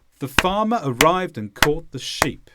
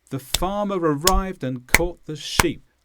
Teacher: there was an equal amount of time between farm rived caught and sheep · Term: rhythm